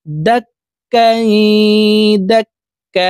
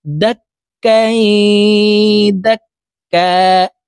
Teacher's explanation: এখানে দুই জবর আছে, দুই জবর থেকে এক জবর সরিয়ে ফেলে বাকি এক জবর রেখে এক আলিফ টেনে পড়তে হবে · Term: মধ্যে ইওয়াজ